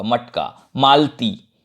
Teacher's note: जैसे मटका, तो ये ट जो है, ट बोलेंगे तो इसमें ट में क्या है, जैसे अपन ट है जो ये है ना, तो ट में क्या है, अपन ट में देखेंगे कि ट में अ जुड़ा हुआ है, लेकिन यहाँ पर ट में अ का उच्चारण नहीं होगा। मटका, मालती, ऐसा लगेगा अपने को कि ये मालती, ऐसा ल आधा होगा बोलने में, लेकिन ल पूरा लिखा जाता है, यहाँ अ का उच्चारण नहीं हो रहा है।